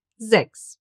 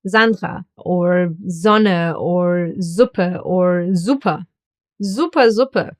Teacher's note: an S at the beginning of a word will be pronounced like a Z